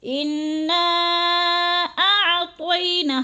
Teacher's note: انا کی نون مشدد ہے، سختی سے جماؤں کے ساتھ ہم نے غنہ کرنا ہے ادھر، اور نا پہ جو ہے مد منفصل ہے، 4 الفی مد ہے، اس کو 4 حرکات کے برابر ہم نے لمبا کرنا ہے